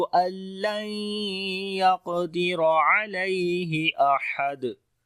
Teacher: क़ाफ को मोटा पढ़ेंगे, यहाँ पर कलकला भी होगा, और रा को भी मोटा पढ़ेंगे, इसके ऊपर ज़बर है।